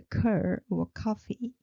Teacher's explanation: ka is a burst of air rising